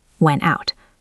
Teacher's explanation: we often drop the T after an N